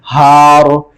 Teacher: रॉ को मोटा पढ़ेंगे, मैंने रॉ का कायदा, रॉ साकिन का कायदा बताया था कि रॉ साकिन से पहले अगर जबर या पेश हो तो मोटा पढ़ेंगे, जेर हो तो बारीक पढ़ेंगे। तो हारिन वकफ में रॉ को मोटा पढ़ेंगे क्योंकि रॉ साकिन से पहले जबर है